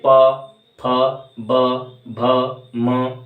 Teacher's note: जिसमें होठ मिल रहे हैं आपस में बोलते समय वो ओष हो गए जैसे बोल के देखिए प फ ब · होंठ आपके मिल रहे होंगे, बिना होंठों को मिलाए ये वर्णों का उच्चारण कर पाना असंभव है। प फ ब भ म, ये ओष्ठ हैं।